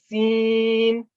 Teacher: اور سین میں سیٹی کی آواز ہے